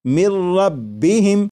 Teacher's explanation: جب نون ساکن کو را میں ملا کر پڑھیں گے تو پھر نون ساکن کی آواز نہیں آئے گی، بلکہ میم کے بعد را کی آواز آئے گی، اور یہاں پر غنہ نہیں کریں گے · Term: ادغام